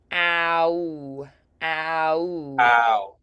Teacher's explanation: >> So it's interesting because the tongue position is more forward at the beginning, but you feel the corners of your mouth are more back · we have a lot of those diphthongs is what they're called in English, where we have one vowel sound that glides into another